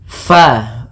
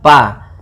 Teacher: Usahakan di dalam melafalkan huruf fa ini harus ada aliran nafas, karena fa memiliki sifat yang namanya sifat hamas.